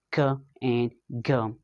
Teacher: And in velar, we have the back of the tongue. Back of the tongue comes against the velum or the soft palate.